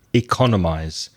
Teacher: And the verb is to economize. That's stress on the second syllable.